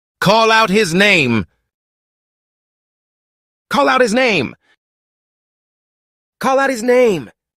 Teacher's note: maybe a little bit of an aspiration of the H not completely eliminated but yeah there's link there